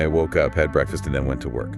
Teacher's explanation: Hear how the voice rises slightly on each item of the list. Woke up, breakfast, then falls at the very end. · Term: list intonation